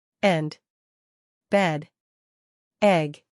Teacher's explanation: The vowel To create its pronunciation, first the lips are slightly spread and unrounded, and the jaw and tongue are middle level in the mouth